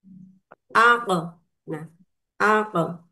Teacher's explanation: Kemudian menurut istilah, jahar adalah tertahannya aliran atau embusan nafas ketika mengucapkan huruf karena kuatnya tekanan terhadap makhrajul huruf tersebut yaitu qaf